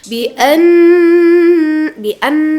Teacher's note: Nun bertasydid disebut dengan ghunah ya. Nah, jadi didengungkan teman-teman